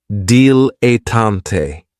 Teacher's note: this word has three syllables and there's kind of like a stress on that first and last syllable.